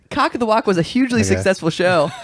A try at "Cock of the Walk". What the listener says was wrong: It just sounded like it was cock of the cock. The walk wasn't very well pronounced.